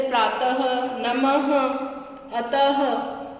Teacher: विसर्ग का उच्चारण ह के रूप में किया जाता है, मतलब ह ध्वनि आती है। इसका प्रयोग वर्णों के बाद में 2 बिंदी के रूप में किया जाता है।